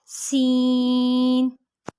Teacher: سین ادا کرتے ہوئے ایک سیٹی کی آواز آنی چاہیے، سین، جو کہ تھا میں نہ ہو، تھا میں سیٹی کی آواز نہیں ہوگی بلکہ جب سین ادا کریں گے تب ہماری ایک سیٹی کی آواز ادا ہوگی، سین.